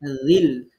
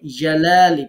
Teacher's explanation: বললাম জাল হচ্ছে জিহ্বার আগায় নরম করে। জিম হচ্ছে জিহ্বার মাঝখানে শক্ত করে।